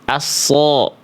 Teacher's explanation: Belum vokal O atau vokal A yang gemuk biar tebel. Nah, pangkal lidahnya diangkat. Jadi bunyinya bukan asa, tapi aso. Nggak pakai monyong. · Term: Isti'la